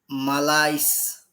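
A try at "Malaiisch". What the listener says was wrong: It's not it's or sis or it's just sh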